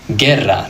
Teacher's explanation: The U is actually silent here. All it's doing is protecting the hard G from the E because the G followed by an E becomes a soft G.